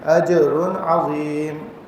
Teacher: اجر، را کے اوپر تنوین آ رہی ہے تو یہاں پہ غنہ نہیں کریں گے، عین آگے حروف حلقی میں سے اظہار کرتے ہوئے آگے گزر جائیں گے